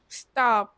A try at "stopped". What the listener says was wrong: Âm tơ rõ ra. Cả pơ cả tơ luôn.